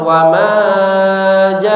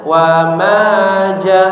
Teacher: mad thbi'i yang panjangnya dua harakat dibaca dua harakat saja